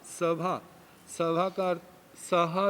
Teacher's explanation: सभा का सहा रूप ऐसा भी बनता, भ को ह हो जाता है